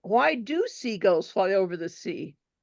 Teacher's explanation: she repeated the question but she stressed do